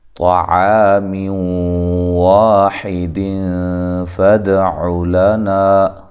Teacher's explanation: طا کو خوب موٹا، الف مدہ ہے، عین کو واضح نکالیں